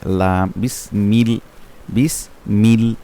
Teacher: লাম হচ্ছে আট নাম্বার মাখরা জিহ্বার আগা তার বরাবর উপরে তার সামনের দাঁতের মানের সাথে লাগায়